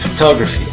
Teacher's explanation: Por exemplo, na palavra photography, não devemos entonar cada sílaba, photography. A entonação ocorre somente na segunda sílaba, enquanto na primeira e na terceira utilizamos o som átono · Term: schwa sound